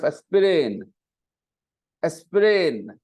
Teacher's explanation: if I said a sprain then I'm stressing the second vowel sound but that's not how you hear the word in the audio